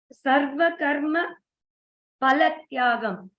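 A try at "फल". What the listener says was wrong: No, in Hindi we say it as fa, but we have to, it's actually in Sanskrit, we have to pronounce it as pha. Phala. so pha, yes. Even if you say phala, that's not a big issue. If you're used to saying pha, that's fine, but you can try to say pha. Phalatyagan.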